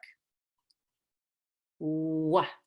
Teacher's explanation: So the lips get very round and they protrude away from your teeth.